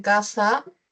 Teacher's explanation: representa al fonema oclusivo velar sordo K en casa